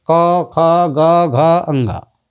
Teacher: का वर्ग के जितने व्यंजन हैं इनका उच्चारण स्थान है कंठ। कंठ क ख ग घ अंगा, इनका उच्चारण स्थान है कंठ।